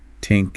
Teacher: the way the th sound is often pronounced as a t or a d think might sound like Tink and that like that yeah it